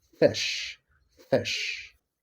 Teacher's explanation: Then we have F which is voiceless and the point of articulation is lavodental. The manner of articulation is fricative.